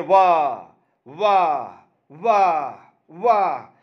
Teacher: दंतोष्ठ जहां पर दांत और ओंठ काम करेगा